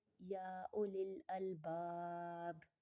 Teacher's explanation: میں نے با کو ساکن پڑھا حالانکہ با کے نیچے زیر ہے، لیکن با کے اوپر عارضی سکون لگایا تو یہ مد عارض کا قاعدہ کہلائے گا.